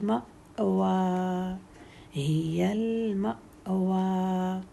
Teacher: میم کے ساتھ حمزہ ساکن ہے تو حمزہ ساکن کو جھٹکا دیتے ہیں